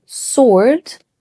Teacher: The W is silent, just like to or answer.